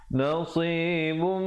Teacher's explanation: Nasibum, idgham bi gunnah, asalnya nasibun, tapi bila bertemu mim jadi nasibum dengan 2 harakat. Mim wajibul gunnah 2 harakat.